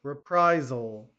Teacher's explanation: Reprisal, okay, make sure the Z sound, okay, on the S